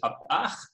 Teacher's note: This might also be reducible to consonant phonotactics, because in Uspanteco and other Guatemalan Mayan languages, words that are underlyingly vowel initial get produced with an epenthetic word initial glottal stop